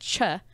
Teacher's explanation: So like ch, it's actually two sounds to combine. It's a t and a sh. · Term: affricates